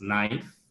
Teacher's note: in english the k n cluster k is being deleted